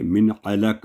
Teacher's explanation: من کی آواز شارٹ ہوگی کیونکہ آگے آئین ہے حروف ہلکیہ میں سے۔ من علق، آئین کو واضح کریں گے، من علق ناٹ علق، من علق۔